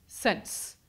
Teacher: it almost feels like you're inserting a T at the end, before the last S sound